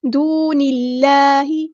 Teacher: اللہ کا لام یہاں پہ باریک پڑھیں گے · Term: ترقیق